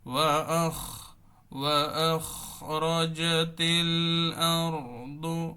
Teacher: ওয়াখরাজাতিল, ওয়াখরাজাতিল যাতে না হয়, রেজাতিল না হয়, র র বলার সময় যাতে আবার ঠোঁটটা গোল না হয়, স্বাভাবিক থাকবে